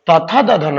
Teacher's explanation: और जो त थ द ध न होता है बच्चे, वो दंत से बोलते हैं।